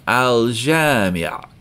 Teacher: j is pronounced in the back of your mouth, so we're going to hear the lam in alif lam, al-jamia, like that.